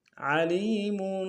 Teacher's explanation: میم کے اوپر تنوین غنہ کریں گے